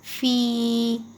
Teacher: یا مدہ کو تھوڑا سا کھینچ کر پڑھتے ہیں